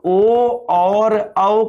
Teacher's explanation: ओ और औ का उच्चारण स्थान जो है मित्रों वो क्या होता है, कंठ ओष्ठ